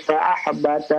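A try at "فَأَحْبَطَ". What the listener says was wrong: Fa ahbata tebal, bata bukan bata ya, bukan tipis ya.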